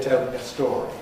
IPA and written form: ˈtel mjə ˈstɔːri (tell me a story)